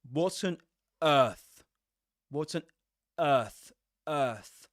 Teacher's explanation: They produce a glottal stop at the beginning of a word, to reinforce that pronunciation. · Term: reinforcement